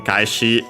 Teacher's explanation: kaeshi on its own, accent on the last mora